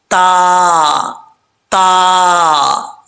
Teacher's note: تا کا مخرج ہے زبان کی نوک اوپر والے دانتوں کی جڑوں سے لگے تو تا پڑھا جاتا ہے. دو نقطوں والا جو تا ہے بریک، تا تا.